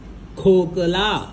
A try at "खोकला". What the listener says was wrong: खोकला खोकला कप क ग खोकला खोकला ख म्हण